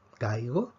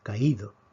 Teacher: En caigo, la fuerza cae sobre la A. En caído, la fuerza cae sobre la I, sobre la vocal cerrada. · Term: acento de hiato